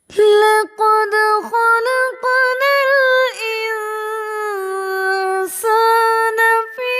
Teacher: next آیت، وَهَذَا الْبَلَدِ الْأَمِينِ لَقَدْ خَلَقْنَا الْإِنسَانَ فِي اس آیت میں دو جگہ پر سین آیا ہے دو الفاظ کے اندر، ایک لقد خلقنا الانسان اور فی احسن تقویم، تو ان دونوں الفاظ کے اندر سین کی پروننسیشن ہم وسلنگ کے ساتھ کریں گے